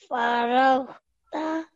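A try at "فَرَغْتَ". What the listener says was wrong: Well done. MashaAllah. Very well read.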